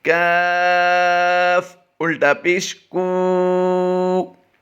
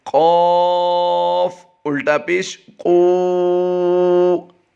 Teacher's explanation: پہلے کی ادائیگی باریک کریں گے، دوسرے کی پر کریں گے